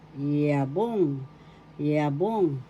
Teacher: The accent is in the second syllable, yabong.